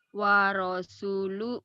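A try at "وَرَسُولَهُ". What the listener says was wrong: Warasulahu. Lah ya bukan lu ya.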